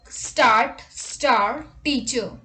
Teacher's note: in standard british english as well as in australian english the r is silent if it is followed by a consonant if it is at the end of a word let's look at the examples for start star teacher let's look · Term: silent r